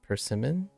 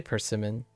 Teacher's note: Second syllable is pitched up, right?